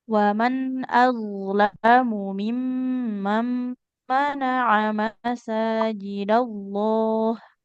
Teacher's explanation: masajidallah, lafadz Allahnya tebal karena didahului oleh huruf berharokat fathah.